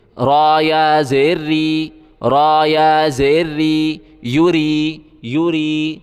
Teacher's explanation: یا پیش یو، را کو یا کے ساتھ ملائیں گے، یا کے اوپر جزم ہے، جزم ملانے کے لیے ہوتا ہے. را کو ہم باریک پڑھیں گے، را کے نیچے زیر ہے